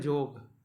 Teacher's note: कहीं कहीं पर य कर उच्चारण ज हो जाएगा